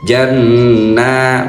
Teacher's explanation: 'Inda rabbihim jann, nun tasjid ghunnah tiga ketukan dengungnya. Janna, nanya dua ketukan mad thabi'i.